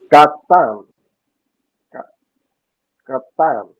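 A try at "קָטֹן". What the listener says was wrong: Okay, it's got a little dot. It's got the O sound, cholem, on top. What is it? So the word is katon. Katon.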